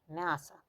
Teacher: Yanın önündə M samiti durduğu üçün A kimi oxunur. M isə incəlir.